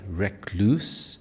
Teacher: In Indian English, depending on region, it may be more like recluse, stressing the second syllable more.